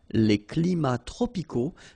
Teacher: even if we've got the plural form here, S, we don't pronounce the S